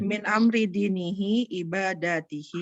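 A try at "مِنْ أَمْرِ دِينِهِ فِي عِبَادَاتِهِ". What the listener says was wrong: Fi, pakai fi. Min amri dinihi fi ibadatihi.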